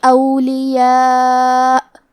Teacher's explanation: کلمت اولیاء میں مد واجب متصل ہے، لہذا ہم اس مد میں اپنی آواز 4 مد کے برابر لمبی کریں گے